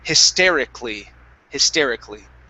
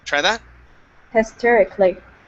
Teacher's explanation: this word we do not so instead of saying hysterically okay we skip right over the vowel a